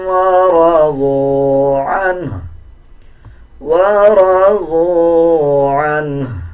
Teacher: جب وقف کیا جائے گا تو ہا کی آدھی آواز نکالی جائے گی